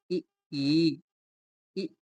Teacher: वे स्वर जिनके उच्चारण में जीवा मुख के अग्र में रहती है। उन्हें अग्र स्वर कहते हैं।